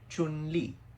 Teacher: her name is pronounced Chun, first tone, Li, fourth tone